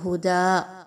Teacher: اگر وقف کیا تو جو تنوین ہے وہ الف مدہ میں بدل گئی